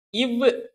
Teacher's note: இது மேல்வாய்ப்பல்லை கீழ் உதடு பொருந்துவதால் பிறக்கின்றன